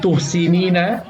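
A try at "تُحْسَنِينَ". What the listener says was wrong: Tuhsa. Kan sanya patah. Tuhsanina.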